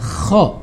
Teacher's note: makhorijul huruf kho itu harus ada getarannya ya. Kho, tidak boleh ho ya.